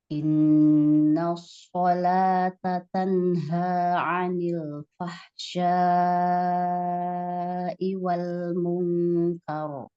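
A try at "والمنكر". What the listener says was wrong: Kar. Kafnya enggak tebel. Yang tebel roknya. Bukan kor. Kor. Jadi jangan kor. Tapi kar. Kar.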